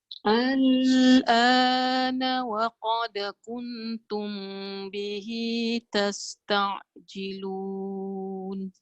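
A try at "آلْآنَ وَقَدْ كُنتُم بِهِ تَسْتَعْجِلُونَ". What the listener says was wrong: Yang kita nak belajar tu macam saya rasa pendek sangat. Dia yang panjang. Ingat. Al tau.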